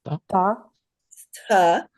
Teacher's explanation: We can tell from the ayast, it has no mark under it. So it's a fourth varga ta, hard, unaspirated.